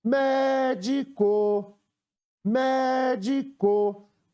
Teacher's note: Qual foi a sílaba que eu demorei mais tempo ou que falei com mais intensidade ao pronunciar a palavra médico? Foi a sílaba mé. Separando a palavra em sílabas, vamos ter mé, di, có. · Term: sílaba tônica